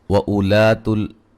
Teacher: इसको हमज़ा को लंबा नहीं करेंगे, उलातुल पढ़ेंगे